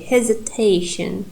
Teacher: our third syllable is primary